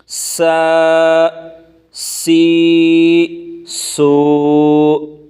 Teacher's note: زا کھڑی زبر زا، زا کھڑی زیر زی، زا الٹا پیش زو، زا زی زو۔ سین سیٹی کی آواز نکالنی ہے۔